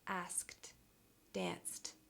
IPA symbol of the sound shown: t